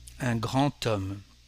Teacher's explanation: un grand homme in French with a connection. The D becomes a T, un grand homme.